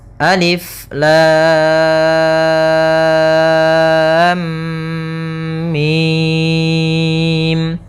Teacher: mimnya termasuk mad lazim harfi mukhaffaf, yaitu kita panjangkan dengan panjang 6 harokat pula